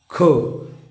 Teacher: ख म्हणताना क अधिक ह मिसळला जातो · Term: महाप्राण